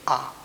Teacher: आ जो ध्वनि है स्वर में उसके उच्चारण में ऊठ पूरे खुले रहते हैं जैसे हम कहेंगे आ तो ओठ जो है पूरे खुले रह